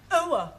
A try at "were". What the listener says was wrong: Try again, but this time, don't say ower, just were. Were.